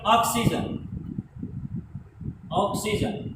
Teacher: ये ना तो आ की आवाज आती है इसके अंदर, ना ओ की आवाज आती है, बल्कि आ और ओ दोनों के बीच की क्या आती है, उच्चारण करते हुए आ और ओ दोनों के बीच की आवाजें आती है, तो ये बन जाता है ऑक्सीजन। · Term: आगत ध्वनि